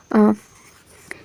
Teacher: ये मध्य से बोला जाता है, मध्य केंद्रीय स्वर है